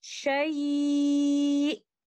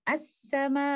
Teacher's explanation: And now you can hear letter Hamza clearly upon stopping. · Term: Nabr